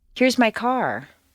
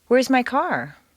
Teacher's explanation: They do, but usually a question will step upward until the very end, where it takes one quick little downward step. A question rises a little higher than a statement with the same intonation pattern. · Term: question intonation